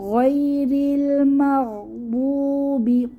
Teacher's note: দদ হচ্ছে মোটা হরফ, খেয়াল রাখবো, মাগদু বলবো না যাতে দালের মতো না হয়ে যায়